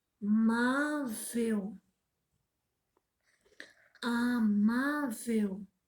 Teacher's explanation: Ó, a acentuação tônica dela é no má, a penúltima.